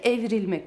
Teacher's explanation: harfi düşer yapım eki aldıktan sonra düşen ünlü kısmına girer bu evirmek kelimesini il dediğimiz yapım ekini getirirsek evrilmek Bakın Gördünüz mü burdaki i harfi düştü